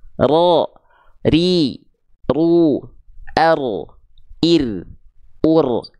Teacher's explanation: getarannya sedikit tapi tegas lugas dan jelas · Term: takrir